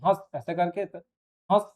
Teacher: तो नाक और मुँह दोनों का इसमें प्रयोग होता है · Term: अनुनासिक